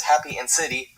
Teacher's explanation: unstressed syllables reduced to while in the words happy and city, the E at the end of each word retains its full value and is still pronounced E.